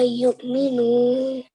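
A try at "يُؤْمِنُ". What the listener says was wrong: Perfect, well done.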